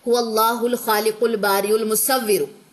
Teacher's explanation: اور اگر ہم نے جوائننگ دینی ہے، پوری لائن کو جوائننگ دینی ہے، تو درمیان میں یہ سارے حمزہ وصلی کیا ہو جائیں گے؟ ختم ہو جائیں گے، دوران کلام ختم ہو جائیں گے. لکھنے میں تو آئے گا لیکن پڑھنے میں نہیں آئے گا.